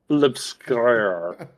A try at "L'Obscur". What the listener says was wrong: Say it with more in the back of your throat. There's a reason it rhymes with lobster.